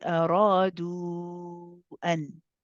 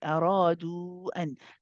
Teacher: This means that this we prolong this for more than 2 counts in the case of wasl. So if we continue and read the word an, then this mud wow will be 4 or 5 counts long. Because it says mad jaiz munfasil.